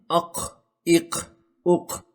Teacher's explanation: जुबान की जड़ को तालू के नरम हिस्से से मिलाने से काफ अदा होता है · قاف اگر ساکن ہو تو اس پر قلقلہ بھی کرنا ہوتا ہے